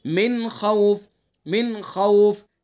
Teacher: من خوف نون ساکن ہے، اس کے بعد حروف حلقی میں سے خا ہے تو یہاں اظہار کریں گے، یہاں غنہ نہیں کریں گے